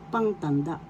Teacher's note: the first syllable has the accent